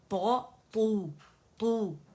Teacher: زبان کی جڑ بھی اٹھائیں گے, آگے سے مخرج پہ ہوگا, زبان کے اندر ڈپ بنے گا